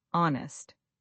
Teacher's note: You're saying to be honest and that H completely disappears. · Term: silent H